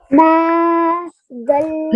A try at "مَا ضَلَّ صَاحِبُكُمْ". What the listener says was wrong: نہیں, ماں کو بہت بھی لمبا نہیں کریں گے.